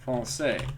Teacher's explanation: Notice that you do not hear the S.